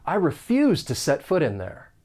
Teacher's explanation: accent when the t comes between two vowel sounds and then we can link that final consonant sound that flap t with the beginning vowel sound in in and it's going to sound like foot in to set foot